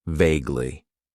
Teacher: It has two syllables and the stress is on that first syllable.